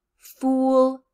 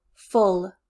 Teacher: make sure that you are making the small circular for fool and the wide loose for full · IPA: /u/ vs /ʊ/